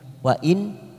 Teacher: nun sukun bertemu hamzah, namanya bacaan idhar halki, kita baca jelas tanpa mendengung